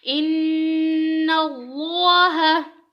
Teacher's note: اب اس میں دیکھیں ان میں نون کے اوپر شد آ گئی ہے، غنہ ہو رہا ہے، اور اللہ کو پر پڑھیں گے کیونکہ اللہ سے پہلے نون کے اوپر زبر ہے